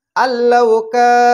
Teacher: কাফ আলিফ জবর কা, এখানে কাফের সঙ্গে আলিফ আছে, তাহলে জবরের বাম পাশে খালি আলিফ, এটা মদের হরফ, এক আলিফ টানে পড়তে হবে।